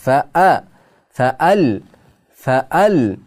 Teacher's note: Hamza qat'iyya aniq qilib o'qilinadi. Hamza qat'iyya jumla o'rtasida kelsa ham aniq qilib o'qilinadi.